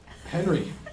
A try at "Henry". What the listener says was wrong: No, there's no H. Henry. You just don't pronounce H.